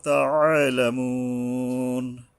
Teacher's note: তাআলামুন, তা, এই আইন উচ্চারণে গলা চেপে সাবধান উচ্চারণ করতে হবে। তাআলামুন, এই ওয়ারের উপরে তিন আলিফ থামে, মানে তিন আলিফ টেনে থামতে হবে।